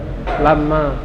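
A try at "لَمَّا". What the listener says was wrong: Lama yang ditasydid adalah mimnya ya, lama.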